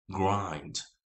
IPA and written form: ɡraɪnd (grind)